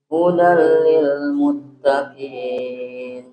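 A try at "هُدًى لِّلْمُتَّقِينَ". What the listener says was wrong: Huruf qaf nggak boleh keluar udara. Hudal lil muttaqin. Muttaqin.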